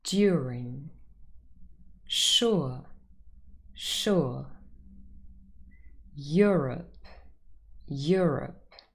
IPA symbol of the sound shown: ʊə